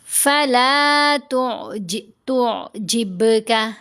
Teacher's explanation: فَلَا تُعْجِبْكَ، تا کو آئین سے ملائیں گے تو آئین کی آواز گلے سے لہر کی طرح ہو کر آئے گی، تو جب کا نہیں پڑھنا، تو جب کا، با کے اوپر ہم نے قلقلہ کرنا ہے۔